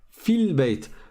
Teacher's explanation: Je passe du fa au lem directement.